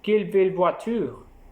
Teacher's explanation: L'intonation est également descendante à la fin d'un énoncé exclamatif